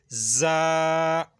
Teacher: یہ سیٹی نکال کے پڑھا جائے گا